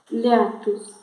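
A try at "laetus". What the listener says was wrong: Letus. A-E si pronuncia E, né? Letus.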